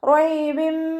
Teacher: 2 count നീട്ടിക്കൊടുക്കുക. റോ ഫതഹ ആയതുകൊണ്ട് നമ്മൾ ഉയർത്തി കൊടുക്കുക കേട്ടോ